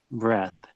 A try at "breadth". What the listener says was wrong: I'd I'd say you're missing out the D often as not.